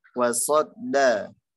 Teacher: huruf sod tebalkan, huruf dalnya tipiskan